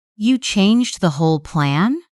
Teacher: Stress whole if the size of the change surprises you.